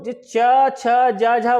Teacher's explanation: स्पर्श संघर्षी का मतलब होता है स्पर्श करने के साथ साथ घर्षण होना